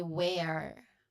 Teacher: So based no noticed on how I say it, the pronunciation, it involves a short sound, as in pen, where, pen, eh, eh, where, and it clears with a it ends with a um clear letter R sound. So it's very rhotic.